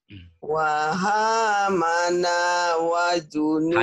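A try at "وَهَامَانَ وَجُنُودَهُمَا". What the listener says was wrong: Hanya panjang. Wahamanya panjang.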